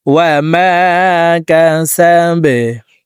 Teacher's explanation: বাকে নিচের দিকে ধাবিত করে সাকিন করে ফেলবো। বা যেহেতু কলকলার হরফ, নিচের দিকে ধাবিত করে ধাক্কা দিয়ে সাকিন করতে হবে।